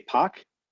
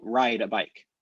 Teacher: Just like in like a Boston accent, syllable initial R's don't get dropped.